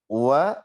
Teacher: Nah, ini nggak boleh ngirung. Ingat, wawu ini bukan huruf khaisum.